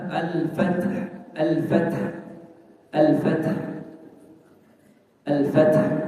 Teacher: Jadi bukan fathah, tapi fath. Dan haknya karena dia sifatnya hamas juga udaranya dialirkan, tidak ditahan. · Nah, ta itu di antara sifatnya huruf ta adalah hamas. Hamas itu adalah mengalirnya udara.